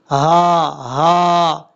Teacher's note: یہ جو ہا ہے یہ بھاری ساؤنڈ کے ساتھ پڑھا جائے گا، اس کی آواز سینے سے نکلے گی، جیسے ہا، یہ طریقہ ہے۔